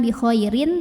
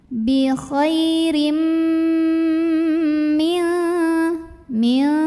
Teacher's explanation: maka tanwin kasrohnya dimasukkan ke mim, lebur. Jadi bukan bi khairin tapi bi khairim, sambil dengung.